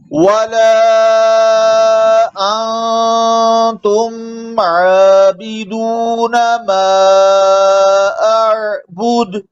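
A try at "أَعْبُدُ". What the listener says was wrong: कलकले के आखिर में कलकला नहीं हो रहा ठीक तरह से। अअबुद अअबुद।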